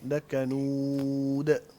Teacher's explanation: قلقلہ کریں گے دال پہ بیٹا